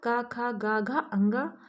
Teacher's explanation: ह्रस्व आ, दीर्घ आ, का वर्ग अर्थात का खा गा घा अंगा, हा तथा विसर्ग का उच्चारण स्थान कंठ है। इसलिए इन वर्णों को कंठ वर्ण भी कहते हैं।